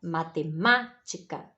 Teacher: Então, ela é a tônica, esse má, né, que é acentuado, é a sílaba tônica da palavra matemática